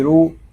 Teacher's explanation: را کو پر پڑھیں گے کیونکہ را کے اوپر پیش آ گیا ہے